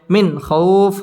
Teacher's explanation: নুন সাকিনের বামে খ আসছে খ ইজহারের হরফ গুন্না ছাড়া স্পষ্ট করে পড়তে হবে